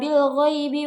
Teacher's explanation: pada kata bil ghaibi terdapat hukum bacaan alif lam qamariyah yang dibaca secara terang atau jelas